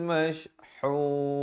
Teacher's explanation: Hun, ha pedas di pertengahan kerongkong.